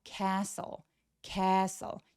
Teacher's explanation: stle의 스펠링을 가지고 있는 애들이 거의 다 t 소리들이 날아갑니다. T가 묵음이 되기 때문인데요.